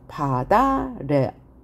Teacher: 그러면 이 밭 다음에 아가 모음으로 시작하는 형태소인데 아래라는 실질적인 뜻이 있는 실질 형태소예요. 따라서 티읕을 대표음, 음절의 끝소리 규칙에 의해서 바꾸죠. 그 다음에 다시 연음하니까 바다레가 됐어요.